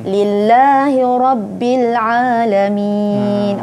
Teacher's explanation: Dengar bunyi ain dia tak jadi alif ya.